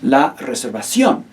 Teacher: be mindful of that written accent mark over the O. Make sure that's the syllable that you stress.